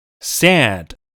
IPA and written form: sæd (sad)